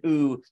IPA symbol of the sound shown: u